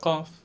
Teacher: The deepest part of the tongue with the soft part in the roof of the mouth we'll pronounce the qaf.